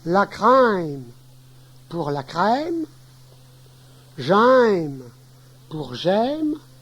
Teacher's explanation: Un ouvert long, légèrement diphtongué lorsqu'il est suivi d'une consonne nasale.